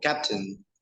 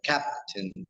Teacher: So the stress is what we call in Spanish uh, the accent, el acento, is where is the where's the strong sound of the word, as in the word, for example, captain. The first syllable is stressed, captain. And we can see that the vowel sound is longer than in the second syllable. That is not stressed.